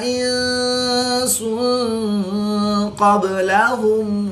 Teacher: نون ساکن کے بعد سین حروف اخفا میں سے ہے تو یہاں پر اخفا ہوگا یعنی غنہ زمانی کر کے پڑھیں گے۔ دو پیش کی تنوین کے بعد قاف بھی حروف اخفا میں سے ہے تو یہاں پر بھی اخفا ہوگا یعنی غنہ زمانی کر کے پڑھیں گے